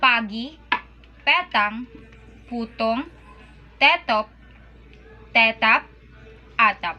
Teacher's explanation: Next is P and B. P is voiceless, never aspirated, and unreleased when it occurs in the final position.